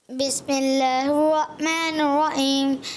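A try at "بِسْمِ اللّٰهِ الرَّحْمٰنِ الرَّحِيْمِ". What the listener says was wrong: اچھا دیکھو, بسم اللہ الرحمن الرحیم آپ نے ہا ادا نہیں کیا.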